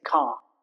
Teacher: R at the end of the word is not pronounced. We just say car. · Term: Non-rhotic accents